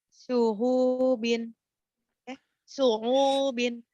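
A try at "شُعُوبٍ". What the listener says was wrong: Iya, ainnya itu bukan ha. Syu'ubin kemudian laha.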